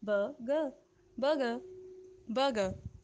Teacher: Vowel sounds के बाद आर जो है वो साइलेंट हो जाता है और आप इसको सिंपली कहेंगे बर्गर, बर्गर, बर्गर.